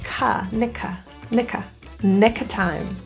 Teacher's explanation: The word of is reduced to a quick and the K in nick slides over to that vowel